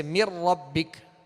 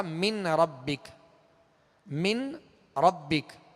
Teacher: اب نون ساکن کے بعد چونکہ را آ گیا، اب نون کو را میں ملانا ہے. مر ربک، اب اس کو من ربک غنہ نہیں کریں گے.